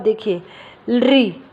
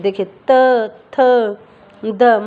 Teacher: जब हम इन वर्णों को जब हम बोलते हैं तो ये कहाँ लगते हैं? हमारे दांतों पर।